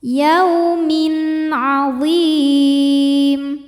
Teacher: Min ada hukum namanya idhar halqi. Sebab ada tanwin kasrah menghadapi huruf halqi atau huruf tenggorokan yaitu ain. Maka tanwin ini kita bunyikan dengan jelas.